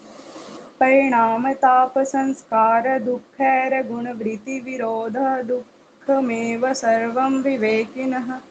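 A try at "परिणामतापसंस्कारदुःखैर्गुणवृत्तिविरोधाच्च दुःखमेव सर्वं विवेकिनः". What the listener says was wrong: विरोधाच skip कर गए।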